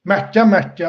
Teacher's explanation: k hərfinin g kimi tələffüz edilməyi bir dənə sözün ortasında gəlmə məqamına görədir. Başqa bir məqama görə deyil.